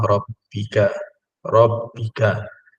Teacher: ra yang berbaris atas dibaca dengan tebal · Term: tafkhim